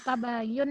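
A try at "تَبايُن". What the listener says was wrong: Baknya panjang.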